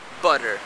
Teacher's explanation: pronounces an alveolar tap sometimes in phonetics this is referred to as an alveolar flap